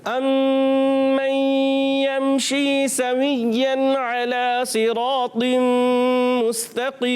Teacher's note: اور یہاں پر شیم کی ادائیگی کلیئر رکھنی ہے. یا مدہ ہے, ایک الف کھینچ کر ادا کریں گے